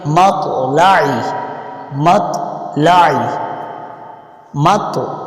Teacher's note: ابھی با کو طا کے ساتھ ملا رہے ہیں تو طا کی ادائیگی بھی ہو رہی ہے اور اس میں تھوڑا ہلا کر بھی اس کو پڑھا جا رہا ہے · طا کو جب پڑھیں گے کسی لفظ کے اگر درمیان میں آ جائے تو طا کو پڑھنے کا طریقہ یہ ہے کہ طا کو ہلا کر تھوڑا موٹا پڑھیں گے، یعنی اس کے پڑھنے میں تھوڑی بہت سختی ہوگی، تھوڑا موٹا پن ہوگا